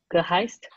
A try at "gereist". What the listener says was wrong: It's an R, gereist.